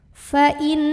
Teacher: Maka cara membacanya, nunnya ditahan, bunyi dengungannya kurang lebih 2 harokat. Jadi bunyi annya ditahan, dilamain. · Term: gunnah musyaddadah